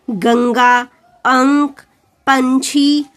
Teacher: जब हम अनुस्वार का उच्चारण करते हैं तो केवल नाक से हवा निकलती है, इसे ये बिंदी के रूप में लिखा जाता है, जैसे गंगा, अंक, पंछी आदि।